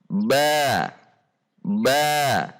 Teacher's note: Sifat huruf ba yang pertama adalah al-jahr atau al-jahru. Berarti saat membunyikan huruf ba ketika berharokat tidak dengan mendorong udara dari dalam rongga mulut.